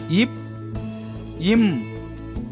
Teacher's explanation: மேல் இதழும் கீழ் இதழும் பொருந்துவதால் பிறக்கின்றன